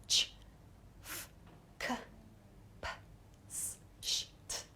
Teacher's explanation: So the unvoiced consonant sounds, meaning the consonants that we make without using our vocal cords